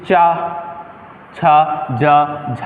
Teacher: चा, छा, जा और झा, इन चारों वर्णों को क्या कहा जाता है, स्पर्श संघर्षी व्यंजन कहा जाता है